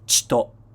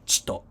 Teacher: You're making a chi position with your mouth, and you're just blowing out air ch, without making a vowel sound. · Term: drop the vowel sound